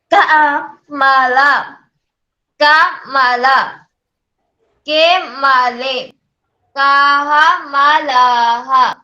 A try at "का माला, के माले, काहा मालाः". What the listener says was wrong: हाँ, प्रश्न उत्तर दोनों अलग अलग है, तो बीच में थोड़ा सा गैप देना है। का, माला, पुनः एक बार।